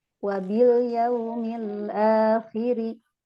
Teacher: Wabil yaumil akhiri ri-nya pendek, jangan dikasih, nggak ada huruf mad.